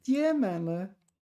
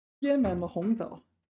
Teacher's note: this is first tone to produce fruit. One of the rare cases where it's first tone.